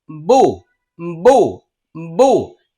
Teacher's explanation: পেশের উচ্চারণ করার সময় দুই ঠোঁট গোল হবে।